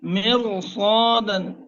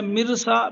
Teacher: را کو پر کرنا ہے اور صاد کو بھی پر کرنا ہے